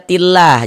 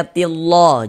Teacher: Ini kita baca tillah, jangan dibaca tillah, jangan. Lafaz Allahnya itu kita baca tipis, kita baca tarkik.